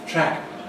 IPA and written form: træk (track)